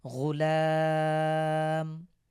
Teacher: শেষে আমরা ওয়াকফ করব, এজন্য এক আলিফকে তিন আলিফ টেনে পড়ব।